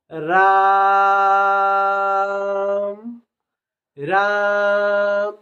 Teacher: प्लुत स्वर लगने के कारण देर से आवाज आ रही है